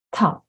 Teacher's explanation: and then top [t] aspirated